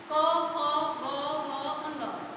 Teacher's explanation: गले से आवाज आ रही है, इसलिए इसे कंठ बोलेंगे